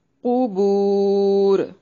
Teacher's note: بعثرہ، سا کو نرم ادا کریں گے، را کو موٹا، را کے اوپر فتحہ ہے، ما الف مدہ ہے. فل قبور، قاف کو موٹا، بو واو مدہ ہے اور وقف کی صورت میں را کو بھی موٹا پڑھیں گے، را کو ہلانا نہیں ہے.